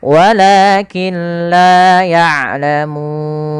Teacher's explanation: kita ambilkan yang 4 saja karena dia tengah-tengah, tidak terlalu pendek dan tidak terlalu panjang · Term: 4 harakat